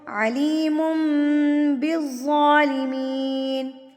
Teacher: علیم تنوین کے بعد با آ گیا, تو تنوین کی آواز کو آپ نے کس میں بدلنا ہے, میم میں بدلنا ہے